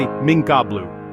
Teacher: You don't say mincablu or mkabl. You say minkabl with a light nasal sound that gets ready for the heavy cough.